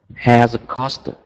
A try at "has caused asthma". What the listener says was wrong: Perfect. Yes,